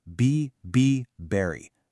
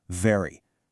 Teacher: for V, your top teeth rest lightly on your bottom lip, and you vibrate the air.